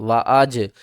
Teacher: جیم ساکن ہے، ہلا کر پڑھیں گے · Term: حروف قلقلہ